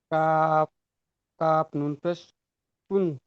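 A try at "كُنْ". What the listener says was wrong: অক্ষরের টানটা ছেড়ে গিয়েছে, কাফ নুন পেশ কুন। হ্যাঁ, হারাকাতের পড়াকে তাড়াতাড়ি পড়তে হারাকাতের পড়াকে তাড়াতাড়ি পড়তে হয়। উপরে সাকিন আছে,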